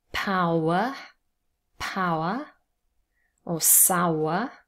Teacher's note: the schwa is never stressed so the stress is on the first syllable